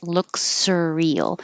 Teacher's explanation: Its color looks surreal. So don't take any pause. Keep one S moving into the next S.